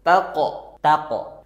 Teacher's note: qof sukun suaranya tertahan dan mantul